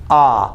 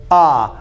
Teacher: it's the most open Sound your mouth is wide open ah your throat is open ah your tongue is down and